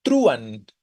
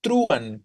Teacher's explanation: Para que fuera hiato tendríamos que decir truán, ¿no? Con fuerza sobre la U.